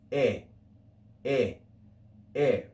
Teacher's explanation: The first diphthong here in church pronunciation is not I, but simply e, e, e.